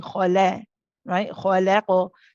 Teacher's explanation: The other thing to be careful of here is sometimes people try to overdo the lightness of the lam, and they end up doing something called imala. So they'll end up saying khala, right?